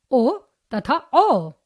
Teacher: कंठ और ओष्ठ की सहायता से बोले जाने वाले वर्ण कंठोष्ठीय वर्ण कहलाते हैं।